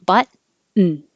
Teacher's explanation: we don't say the T at all. We make a N as its own syllable. Put the tongue in the T position, button.